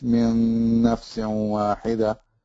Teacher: So you can join the noon sakina with the noon, so it becomes min nafsin wahida.